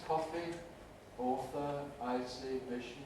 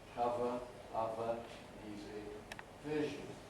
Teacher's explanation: make sure that we're fully in control of the voicing distinction fricatives here top row the voiceless ones coffee author i see mission bottom row the voice ones cover other music vision